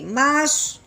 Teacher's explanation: صاد کو پر کر کے پڑھیں گے